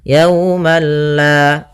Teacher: Tapi perlu diingat, bila gunnah berarti tidak disertai dengan gunnah, sehingga langsung saja, tidak boleh ditahan, tidak dibaca yaumallah, tidak, tapi langsung saja yaumallah.